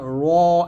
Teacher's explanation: তার বরাবর উপরে তালুর সঙ্গে লাগিয়ে ত উচ্চারণ করতে হবে এবং কম্পিতভাবে উচ্চারণ করতে হবে র ঠোঁটটা এখানে গোল করা যাবে না র এরকম না র মোটা করে রহ যে আগা উপরে তালুর